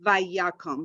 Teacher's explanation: So we have the vi, we have ya. Accent is on ya.